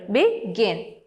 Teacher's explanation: begin the stress is on the second syllable